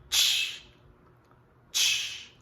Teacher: se perceba essa ocorrência do T palatalizado para tch, tch. É como se fosse a sequência CH na palavra chair, chair, ok?